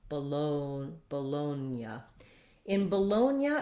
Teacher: we have the stressed clear vowel in the second syllable · this o the first o is the one that becomes the the schwa sound the uh sound · In Bologna, if we say it this way, we do, the G does influence the N. We don't say it with a G, G sound, but we do have a Y sound after the N. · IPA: /bəˈloʊnjə/